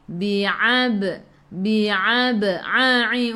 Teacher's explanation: A'i daripada kerongkong, bukan daripada hidung